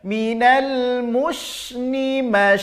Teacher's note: al-musnid harus mengalir karena sifat Hames ya Minal musyrikin bukan masyaikh gak ada pergerakan bibir karena dia bukan huruf syafatain bukan huruf bibir